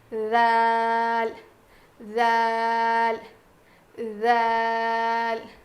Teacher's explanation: جیسا ہم نے سا ادا کیا تھا نا، بالکل ویسے ہی ذال ادا کریں گے. جب ہم ذال ادا کریں گے تو ہماری زبان کی نوک جو ہے وہ سامنے کے دانتوں کے کنارے کو لگے گی اور تھوڑی سی زبان کی نوک باہر نکلے گی